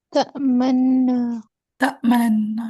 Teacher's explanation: पहले वाले नून को दूसरे वाले नून में दाखिल करेंगे, दूसरे वाले नून पे तशदीद आ जाएगी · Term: इदगाम है कबीर